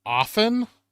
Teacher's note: a lot of people leave out the t sound